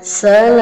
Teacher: kalau mad arid disukun paling pendek 2, paling panjang 6 ya. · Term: mad arid lis-sukun